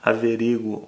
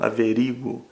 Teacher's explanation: as flexões podem ser pronunciadas com acento na sílaba do u ou na sílaba anterior